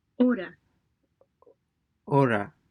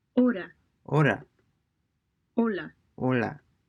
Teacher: the Spanish H is always silent